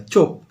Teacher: মহাপ্রাণতা থেকে অল্পপ্রাণতার দিকে যাচ্ছে ধ্বনিটা।